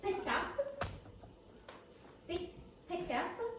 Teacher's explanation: the pronunciation of P's at the beginning of words in English? They're aspirated.